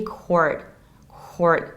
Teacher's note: you can optionally skip final T